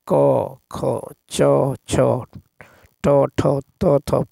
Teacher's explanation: जिन व्यंजनों के उच्चारण में स्वर तंत्रों में कंपन ना हो ठीक है अघोष व्यंजन कहलाते हैं